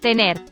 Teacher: This Spanish R is called the alveolar tap or the alveolar flap